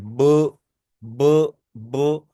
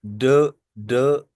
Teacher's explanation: vocal cords पर अपना hand touch करें और बोले ब ब ब तो मैंने अभी टच किया है तो वाइब्रेशन हो रही है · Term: वॉइस साउंड